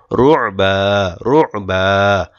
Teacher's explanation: আইন চাপ দিবেন গলা থেকে